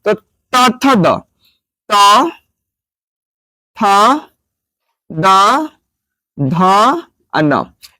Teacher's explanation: उच्चारण स्थान होता है वह दंत होता है